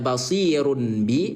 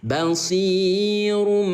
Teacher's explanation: Yang diganti adalah bunyi dhammah tanwin run menjadi suara mim. Atau gini bun, ya, bunyi n ya kita ubah menjadi bunyi m. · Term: iqlab